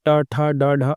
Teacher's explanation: यहां पे जो है मूर्ध का प्रयोग हो रहा है। इसलिए ये मूर्धन्य व्यंजन कहलाएंगे।